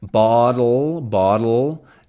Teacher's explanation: Bottle, bottle, my tongue stays from the d to the ul. So there's no vowel sound, right? I'm not opening it. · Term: syllabic consonant